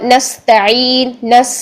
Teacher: سین میں سیٹی ہونی چاہیے